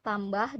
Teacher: bunyi teh merupakan bunyi tak bersuara